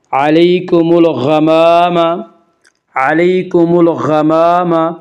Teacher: غین کو پر پڑھیں گے۔ غین حروف مستعلیہ میں سے ہے، حروف مستعلیہ 7 ہیں جن کا مجموعہ خص ضا و تنقیز ہے، یعنی خا، صاد، ضاد، غین، طا، قاف، ضا۔